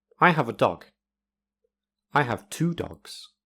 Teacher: In A's speech, dog is stressed, but in B, it is 2.